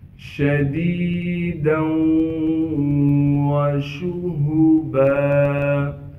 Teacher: شَدِيدًا وَشُهُبًا، شین کو صاف کر کے شین کی آواز نکالیں گے، ہا کو گلے سے نکالیں گے، گلے کا وہ حصہ جو سینے کی جانب ہے، با پر 2 زبر ہونے کی وجہ سے جب با پر وقف کریں گے پھر با کو ایک الف کے مقدار کھینچیں گے۔